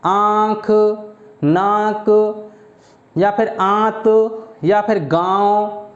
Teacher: तो ये जो चंद्र बिंदु आ रहा है ये ही अनुनासिक का वर्णन करा रहा है। आप अनुनासिक जो होते हैं ये याद रखना, नाक और मुंह दोनों की सहायता से बोले जाते हैं। जैसे कि बोल कर देखो, आंख, नाक या फिर आंत या फिर गांव।